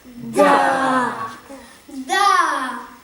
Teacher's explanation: se prononce en donnant du bout de la langue au-dessus des dents d'en haut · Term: La consonne D